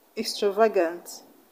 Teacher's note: In this word, A after V is a schwa sound. A after G is also a schwa sound.